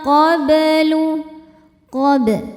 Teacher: Cara baca huruf bnya ini dipantulkan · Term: qalqalah sugro